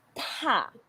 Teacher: we use the first tone. It's like you're singing.